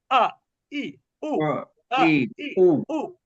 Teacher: হামজাটা একটু ধাক্কার মতন হালকা